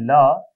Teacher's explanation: ल जिसका उच्चारण करते समय वायु जीभ के पार्श्व हिस्से से बाहर निकल जाता है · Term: पार्श्विक वर्ण